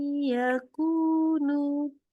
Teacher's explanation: yakunu maka in n-nya berubah jadi y dan ketika membacanya ini masukkan lewat hidung tahan tiga harakat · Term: idgham